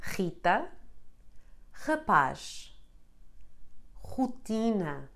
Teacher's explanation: When in the beginning of a word, this letter always sounds like r. This sound comes from your throat and it forces a vibration in your vocal cords.